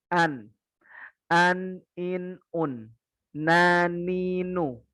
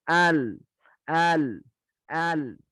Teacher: Tepi ujung lidahnya nempel semua. Kalau nun cuma ujung lidah. Kalau lam tepi ujung lidah.